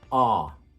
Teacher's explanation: vowel these are words that are commonly spelled with an o for the american accent the lips are more opened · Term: the lot vowel